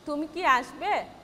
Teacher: my voice will be soft, and at the end of my sentence it is falling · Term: falling voice